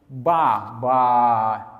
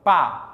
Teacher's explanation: Pensa aqui em ba é sonora, pá é surda.